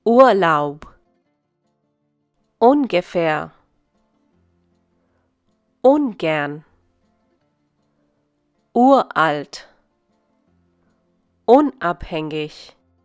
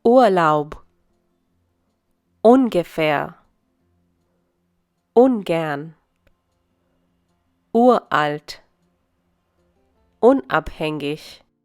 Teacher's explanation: The next category of words are those that begin with un or ur. These prefixes are always emphasized.